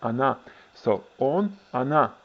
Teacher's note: Russian word for she is really stressed on the last syllable, and it's pronounced like ana